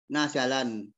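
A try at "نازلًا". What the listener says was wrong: Nazilan itu ada alif. Ada alif lah, ada alif pun jangan tanwin.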